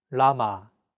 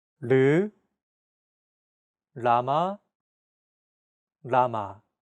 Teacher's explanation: between an L and an R sound when pronouncing this sound your tongue should strike the gum Ridge behind your upper teeth in a quick rapid motion · this sound is actually somewhere between an L and an R sound when pronouncing this sound your tongue should strike the gum Ridge